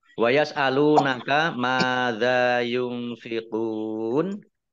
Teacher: Mim fathah alif mat tobi'i, dzal fathah alif juga mat tobi'i, dibaca panjang 2 harokat. Nun sukun bertemu dengan huruf fa, bacaan ikhfa, dibaca samar-samar. Qaf dhammah wawu sukun mat tobi'i, tetapi karena bertemu dengan huruf terakhir yang dibaca sukun karena wakof, maka menjadi mad arid lis sukun.